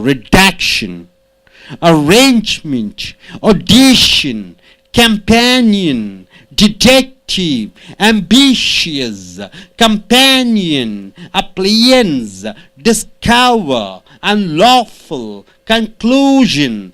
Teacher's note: the second syllable should be stressed